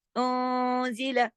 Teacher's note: نون ساکن کے بعد زائی، یہاں پہ انزلہ، اس کے اوپر اخفا حقیقی غنہ کاملہ ہوگا. انزلہ، لیکن لام کے اوپر زبر ہے، ایک حرکت کھینچے گا، زیادہ نہیں کھینچنا، اس کو جتنا لکھا اتنا ہی پڑے گا.